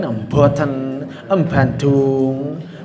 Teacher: biasanya huruf ba, jim, dan dal itu berudara. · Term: B Jawa